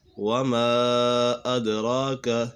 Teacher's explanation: وما ادراک یہاں پر مد منفصل ہے، حروف مدہ کے بعد حمزہ دوسرے کلمے میں ہے تو اسی وجہ سے مد منفصل ہوگا. دال کے اوپر قلقلہ ہو رہا ہے